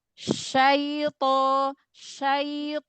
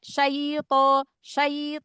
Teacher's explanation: huruf Lin itu ada temponya ya Ada temponya lebih dari satu harakat tapi enggak sampai dua harakat